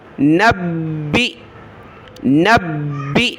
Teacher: با کو سخت کیا حمزہ پر جھٹکا دیا